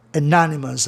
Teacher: aí a sílaba tônica muda de lugar, fica no NO